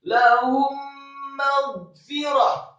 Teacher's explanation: mim mati ketemu dengan huruf mim digunahkan. Idgham mimi atau didengungkan.